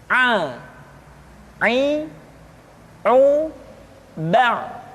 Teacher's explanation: Selanjutnya pengucapan huruf A dikeluarkan dari tengah-tengah tenggorokan seperti kita mengucapkan huruf H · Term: huruf Ain